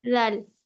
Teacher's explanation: زال کو ہم نرمی سے ادا کریں گے. اس کا مخرج ہے زبان کی نوک اور اوپر کے 2 دانتوں کا کنارہ، ہے نا. اور زال جو ہے وہ حروف مستعلیہ کا حروف نہیں ہے، یہ موٹا نہیں پڑا جائے گا.